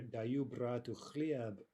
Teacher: The emphasis would be more on the final word in the sentence, bread. So it would mean something more like, I'm giving bread to my brother, as opposed to, I guess, the more neutral, I'm giving my brother bread.